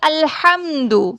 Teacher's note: ہا یہ حلق کے درمیانی حصے سے ادا ہوتا ہے